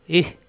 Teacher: আইন কণ্ঠনালীর মাঝখানে, হা কণ্ঠনালীর শুরুতে